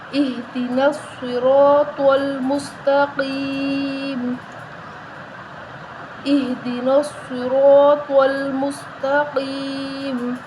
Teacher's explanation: سین سیٹی والا حروف ہے، سین کی آواز نکال کے پڑھیں گے